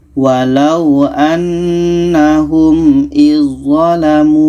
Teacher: Maka zal ini kita tak baca lagi. Terus masuk ke za. Izzalamu. Ini yang pertama, ujung lidah bertemu ujung gigi seri atas.